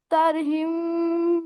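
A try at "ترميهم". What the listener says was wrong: তার হিম, তার হিম পড়ছেন, তার মিহিম।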